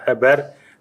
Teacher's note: в нижнесакмарском говоре наблюдается частое употребление гортанного согласного «х» в начале слова